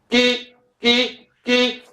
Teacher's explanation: the tuning happens right against the soft palate and hard palate the moment the tongue splits from the palate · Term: g sound